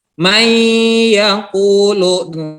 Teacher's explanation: Tapi nunnya masuk ke huruf ya karena dia idgham bigunnah.